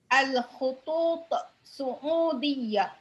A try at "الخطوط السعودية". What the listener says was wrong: There is ألف.